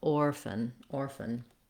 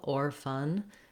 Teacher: I'm trying to move as quickly as possible from the F to the N sound. That's called a syllabic N. Basically, the N is the whole syllable. We just say the N sound. We don't need much vowel before it.